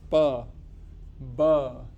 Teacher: plosive sounds, where let's say your lips have closed and they suddenly open.